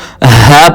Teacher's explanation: ہا یہ حرف حروف حلقی میں سے ہے. اس حرف کو حلق کے آخری حصے سے جو گلے کے قریب ہے وہاں سے ادا کیا جائے گا. ہم اس کو ہا پڑھیں گے.